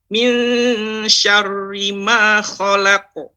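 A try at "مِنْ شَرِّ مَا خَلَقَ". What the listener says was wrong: Ini masih tebal. Coba ulangi sekali lagi. Syarri. Sya juga bukan harus dibulatkan mulutnya. Tapi syarri. Nah, berarti ditipiskan dengan cara melebarkan mulut dan lidah belakang itu ke bawah. Syarri. Syarri ma khalaq.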